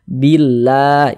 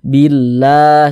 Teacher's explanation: Baris satu di bawah huruf harokat kasrah, maka lafaz Allah dibaca tipis, baca tarkik. Jadi huruf lam yang di tengah nih namanya lam jalalah. Nah, jadi lam jalalahnya dibaca tipis, baca tarkik.